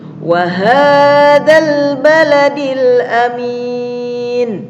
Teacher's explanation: Mil di sini alif lamnya terbaca, tidak ada yang menghalangi. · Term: idhar qamariyah